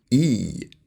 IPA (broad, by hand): iː